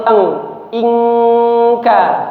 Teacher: ikhfa-nya itu adalah nun sukun bertemu dengan huruf kaf, ya. Ini tingkatan ikhfa yang adna, ya. Jadi tingkat bunyi samarnya itu paling rendah.